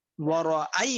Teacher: এই আইটা একটু সামান্য পরিমাণ ওয়াদ দিকে ধাবিত হয়েছে